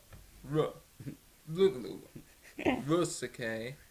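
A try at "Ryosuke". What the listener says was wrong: You don't have to emphasize the Ro. It's just Rosuke. You're saying... Because you're thinking Rook. So when you say Rosuke's name, you're saying Risuke, which is not right.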